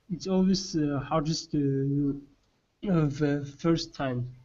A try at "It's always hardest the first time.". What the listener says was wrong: So you're saying it's always okay, so you're adding the in between your words. Okay, try it one more time. Remove the sounds. Only say the words.